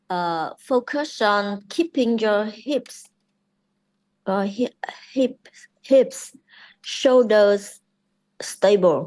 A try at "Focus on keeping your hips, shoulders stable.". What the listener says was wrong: Alright, that's good.